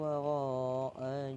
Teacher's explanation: waro itu mat wajib muttasil panjang 4 atau 5 harokat